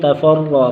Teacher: تفرق را موٹا را کے اوپر زبر ہے